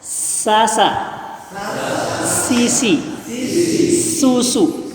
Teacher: tempatnya ujung lidah bertemu dengan ujung gigi seri bawah